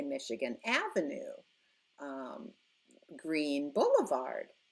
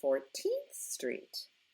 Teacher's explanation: whenever we use street for some unknown reason we always stress the first word